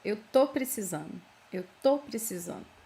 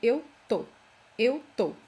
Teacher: most of you already know that this first syllable in the verb estar is dropped. So we just say eu tô.